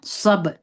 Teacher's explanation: صاد مې د با سره وجنګوي، پر با مې قلقله وکړه. صب، صاد دروند دی، سب به نه وایي، د سین په اواز به نه وایي